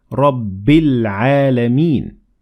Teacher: But we ignored the following Hamzatul wasl because we kept on reading and we said Rabbil Alameen. So here we connected the ba directly to lam and we said Rabbil Alameen.